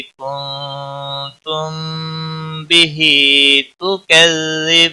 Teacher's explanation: میم ساکن کے بعد با آیا ہے. اخفا شفوی ہوگا. غنہ کے ساتھ پڑھیں گے. ہا کے نیچے کھڑی زیر ہے 1 الف کے برابر کھینچ کر پڑھیں گے.